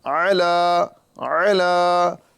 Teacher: اعلیٰ اعلیٰ ہے نا، اعلیٰ اعلیٰ، یہاں پر عین کے بعد لام آ رہا ہے، اور لام پہ کھڑا زبر یعنی کھڑی حرکات ہیں، ایک الف کے برابر کھینچ کے پڑھا جائے گا۔